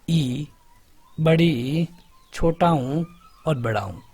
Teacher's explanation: जिनका उच्चारण करने में मुख का द्वार लगभग लगभग बंद रहता है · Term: संवृत्त